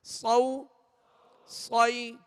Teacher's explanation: صاد کو سیٹی کی آواز میں اور پر پڑھیں گے, موٹا پڑھیں گے, حروف مستعلیہ میں سے ہیں.